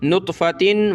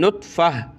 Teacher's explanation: تو گولتا جو ہے وقفن میں ہا بن جاتی, ہا میں کنورٹ ہو جاتی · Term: ہا بن گئی